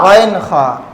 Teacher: اوپر حلق سے غین خا